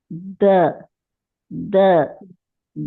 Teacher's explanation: تو آپ سختی سے بھی اگر لگاتے ہیں نا تو اس میں ایک ارتعاش ہوتی ہے. تو یہ جو دال کی آواز جب ہم نکالتے ہیں تو آپ محسوس کریں کہ آپ کا نرخرا بھی حرکت میں آتا ہے